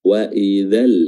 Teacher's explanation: Jadi mat pada huruf za tidak dibaca lagi. Wa idzal, enggak, langsung wa idzal.